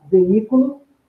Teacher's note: veículo é uma proparoxítona porque a sílaba tônica é a antepenúltima sílaba